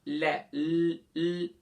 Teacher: جب ل کرتے ہیں تو آپ کے آٹومیٹکلی زبان کا کنارہ جو ہے وہ اوپر یعنی کہ سائڈ پہ لگ جاتا ہے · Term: لام